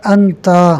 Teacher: تا کے زبر کو اتنا کھینچا گیا ہے کہ آگے الف مدہ پیدا ہو گیا ہے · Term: الف اشباع